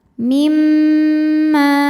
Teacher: karena mim bertasydid maka dibacanya dengung ditahan dengungannya kurang lebih dua harakat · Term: ghunah musyaddadah, gunnah musyaddadah